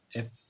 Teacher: इस तरह मैंने कहा कि जो एफ साउंड होता है, ठीक है, एफ, वहाँ पर जो अपर टीथ है, यानी ये वाले लोअर लिप्स को टच करता है, तो इसको इसलिए लेबोडेंटल साउंड कहा जाता है। These are sound formed with upper teeth and lower lips.